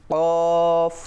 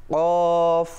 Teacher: জিহ্বার গোড়া তার বরাবর উপরে তালুর সঙ্গে লাগিয়ে। আমরা দেখতে পাচ্ছি জিহ্বার গোড়া ঠিক, বা আমি বলবো আলা জিহ্বা দিয়ে।